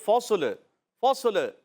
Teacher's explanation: لام کو ہلا دیتے ہیں، آواز آتی ہے فصل، فصل، قلقلہ کر دیتے ہیں